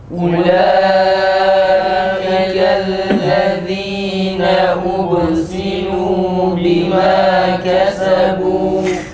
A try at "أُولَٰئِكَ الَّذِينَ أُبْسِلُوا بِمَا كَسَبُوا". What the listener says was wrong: Arkadaşlar ötüreler olmuyor. Bana bakın. Mesela ubesilu böyle hiç dudak tepelenmeden ubesilu olmaz. Böyle yanlıştır. Unutmuşuz dudak hareketlerini. Yalnız dudağını uzatarak.